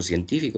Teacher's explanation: científico es una palabra esdrújula, porque la mayor fuerza de voz está en su antepenúltima sílaba